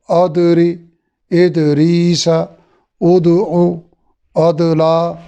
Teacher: دال میں بھی کلکلا ہے لیکن یہ باریک ہے